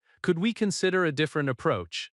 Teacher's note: stress consider and approach. Keep could softer but clear.